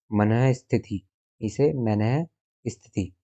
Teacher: विसर्ग का उच्चारण है आधा है के समान होता है